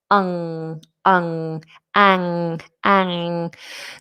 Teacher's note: anxiety, it has this nasal straight after the initial vowel